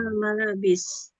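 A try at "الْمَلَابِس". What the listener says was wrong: Kalau udah disambung jangan al lagi. Saakwil malabis atau saakwi al malabis gitu. Iya, maksudnya nggak saakwi stop al malabis, nggak di stop gitu. Ya, kenapa Ustadz harus disambung begitu? Ya, kalau ngobrol sebetulnya sama aja kayak di bahasa Indonesia ya. Kalau kita ngobrol juga kadang lagi ngomong, tiba-tiba stop dulu, berhenti dulu, mikir dulu dan lain sebagainya.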